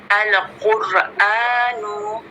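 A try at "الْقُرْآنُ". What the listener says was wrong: Dialirkan lagi sedikit lamnya ya, biar tidak ada pantulan. Nah, jangan al. Ya, jadi dialirkan al-Qur'anu.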